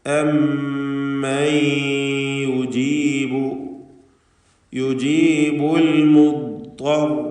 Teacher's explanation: അമ്മൻ, ശബ്ദുള്ള മീമിനെ മണിക്കുക. നൂനിനെ ഇദ്ഗാം ബിഗുന്ന ചെയ്തുകൊണ്ട് യായിലേക്ക് ലയിപ്പിച്ച് ആ സാക്കിനത്തായ നൂനിനെ ഉച്ചരിക്കുക.